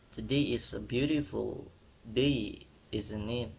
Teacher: Jadi hanya untuk mengonfirmasi ya kayak today is a beautiful day isn't it? Nah, dia nadanya tuh datar atau turun lah tidak seperti bertanya yang naik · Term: nada turun, falling tone